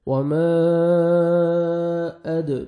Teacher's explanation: دال حروف قلقلہ میں سے ہے، ڈبل ساؤنڈ آئے گا